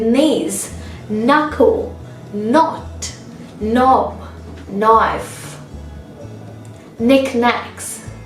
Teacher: So there is no sound of K at all because K precedes N, so it's supposed to be silent. Similar is the case with knees, knuckle, knot, knob, knife, knickknacks.